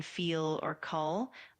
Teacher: The American L can be a bit more pronounced, especially at the end of words like in feel or call.